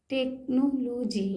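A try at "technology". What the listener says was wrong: Very good. टेक्नोलॉजी, देखिए पढ़ लिया इन्होंने।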